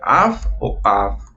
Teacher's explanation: En este caso podríamos decir au, pero en realidad se tiene que pronunciar af o av, como si tuviéramos una f o una v